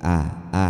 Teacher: Jadi makhrajnya A. A itu di tenggorokan di sini nih.